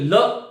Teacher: आगमन हो रहा है, आगमन होते होते ल जिह्वा आगे आकर के इस प्रकार से फण करके इसको रोक लेती है, और रोकने के बाद में क्या होता है, ल जब कब होता है, जब जिह्वा ऐसे लगता है कि जिह्वा के दोनों ओर मानी पार्श्व जो भाग है, बगल वाला भाग है, उससे वायु का बाहर जो है स्फुटन हो रहा है, इसलिए इसको हम पार्श्विक बोलते हैं।